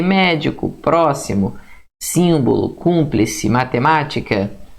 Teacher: sílaba tônica é a antepenúltima ou a terceira de trás paraa frente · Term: proparoxítona, Proparoxítona